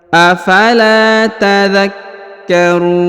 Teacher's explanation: huruf Kaf ditahan dan ditekan